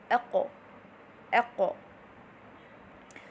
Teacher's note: the posterior portion of the tongue needs to be elevated to the root of the mouth